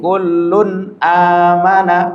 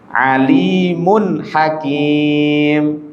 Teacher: N-nya jelas. Jangan berhenti, jangan ditahan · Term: izhar